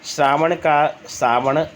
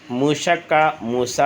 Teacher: तालव्य श और मूर्धन्य श का दंत स हो जाना